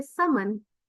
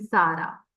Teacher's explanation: the sounds with s would have lesser vibration they are voiceless sounds and the ones with like Z which have more vibration those are voice sounds